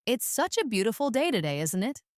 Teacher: Notice how the intonation rises at the end, making it sound like a friendly remark.